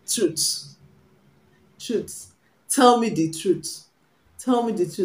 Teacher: the sound we have in the th in truth is a voiceless one